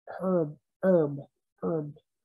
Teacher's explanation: the h is almost silent